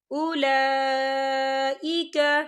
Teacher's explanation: اولئک، یہ دیکھیں اولا لام کے اوپر کھڑی حرکات ہے اور اس پر مد بھی ہے، تو ہم اسے 4 حرکت کے برابر کھینچ کے پڑھیں گے